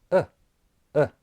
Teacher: the tongue is not forward back high or low it's resting right in the middle of the mouth · all you have to do that's the schw vowel sound so it's short lips are neutral tongue is neutral and it's the most common vowel in English and it's never stressed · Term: schah sound